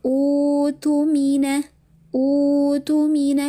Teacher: Jadi utumina utumina dipanjangkan dua harakat.